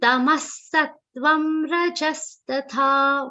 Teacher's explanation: Fourth charan, Tamasattvam Rajastatha. Only the last tha is long, rest of the charan is consisting of short sound.